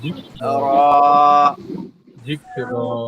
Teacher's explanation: এখানে আবার কাপের বেশি জোরে ধাক্কা দেওয়া যাবে না, কলকলার মতো যেন না হয়, একদম স্বাভাবিক